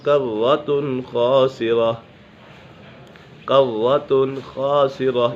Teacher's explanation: قالوا تلك إذا كرة خاسرة، قوۃ خاسرہ، یہاں پر اظہار حلقی کا قاعدہ لگ رہا ہے کیونکہ نون سکن یا تنوین کے بعد حروف حلقی میں سے کوئی بھی حرف آ جائے تو اظہار حلقی ہوگا، یعنی غنہ نہیں کریں گے۔ یہاں پر تنوین کے بعد خا حرف حلقی میں سے ہے تو اسی وجہ سے یہاں غنہ نہیں ہوگا۔ خاسرہ، خا حرف مستعلیہ میں سے بھی ہے اور یہ خا پر ہے۔